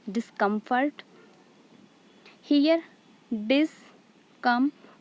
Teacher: So dis is unstressed, come is stressed, and fort is unstressed.